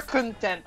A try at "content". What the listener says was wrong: Don't say content like you're satisfied. Say content.